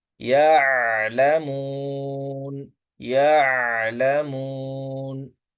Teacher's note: حمزہ کی آواز سخت، عین کی آواز قدرے نرم، حمزہ کی آواز جھٹکے والی اور عین کی آواز بغیر جھٹکے والی۔ اب عین کی آواز نرم ہوتی ہے اور بغیر جھٹکے والی